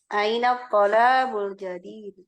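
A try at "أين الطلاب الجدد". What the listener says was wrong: Tolabu apa tullabu?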